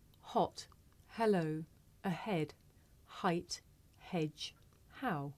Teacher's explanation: this is a voiceless consonant it makes very little sound because it's really just your breath you can hear it at the beginning of the word here